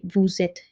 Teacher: So we say vous êtes here. The sir sound becomes zuh and linked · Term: liaison